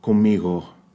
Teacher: that softer G sound that's produced toward the back of the palate, right? The airflow is restricted.